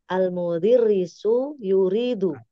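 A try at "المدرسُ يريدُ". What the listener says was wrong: Sini ada kesalahan. Dalnya fathah dia Huruf dalnya di fathah ya. Kalau Pak Guru, al-mudarrisu yuridu. Yuridu.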